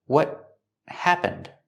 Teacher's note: The T at the end of what is a stop T, and it links to the next word.